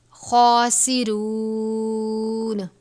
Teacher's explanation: سین کی آواز صاد کی طرح نہیں ہونی چاہیے، یعنی سین کو ادا کرتے وقت سیٹی کی طرح آواز نکلنی چاہیے، را واو پہ شروع، را کے اوپر پیش اور زبر ہو تو را کو پر پڑھتے ہیں، خاسرون۔ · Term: حروف صفیریہ